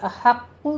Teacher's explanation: ہا وسط حلق سے ادا کریں گے